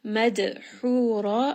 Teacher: Mammadh'uhura This is going to be idgham, nun sakin followed by the letter mim, so merge them together. Dal here is going to have a qalaqala as well because it is part of qutb jad.